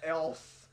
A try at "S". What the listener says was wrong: You said you got an else. That's not pronounced S. It's not pronounced else. You're saying else. You're else. Saying else. Like, come see me or else.